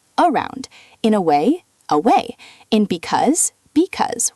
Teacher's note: Like in the word around, the first A, that's a schwa.